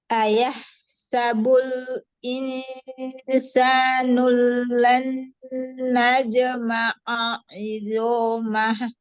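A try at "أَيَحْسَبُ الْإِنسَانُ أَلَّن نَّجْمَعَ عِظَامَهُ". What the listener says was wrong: Allan insanu allan najma'a. Tadi hamzanya terlewat?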